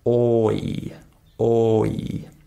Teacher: this is considered to be a one-syllable word, but it has two different vowel sounds. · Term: diphthongs